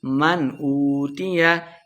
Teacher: اظہار کا قاعدہ ہے، بغیر غنہ کے پڑھنا ہے